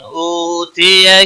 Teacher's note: او واو مدہ ہے، ایک الف کے برابر کھینچ کر پڑھیں گے۔ تی یا کو کھینچنا نہیں، کی تا کے اوپر کھڑی زبر ہے، ایک الف کے برابر کھینچ کر پڑھیں گے۔